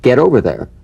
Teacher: the final T, when it's followed by a word beginning with a vowel, again, it becomes, in effect, a medial T. There's a vowel on both sides of it, so it gets softened to a D.